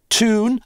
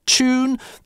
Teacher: в американском английском у нас чаще «йот» выпадает - toone, а в британском палатализуется - choone